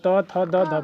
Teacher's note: त त बोल रहा है तो दांत सट रहा है ना